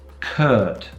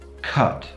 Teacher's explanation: Curt is long, cut is short.